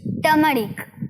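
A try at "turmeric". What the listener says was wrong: টার্মারিক। টার্মারিক কিন্তু ভুল উচ্চারণ, টার র থাকলেও র কিন্তু উচ্চারণ হবে না, সঠিক উচ্চারণ টার্মারিক।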